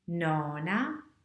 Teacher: letter q so how do i pronounce a double consonant well the trick is to hold your breath for a moment so we can hear that there are actually two letters instead of one